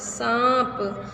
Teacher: इस ध्वनि का उच्चारण करते समय हवा मुख और नाक दोनों से निकलती है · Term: अनुनासिक